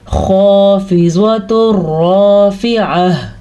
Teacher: خا جہاں سے ہم گلے کی خراش محسوس کرتے ہیں وہاں سے ہی خا اور غین نکلتے ہیں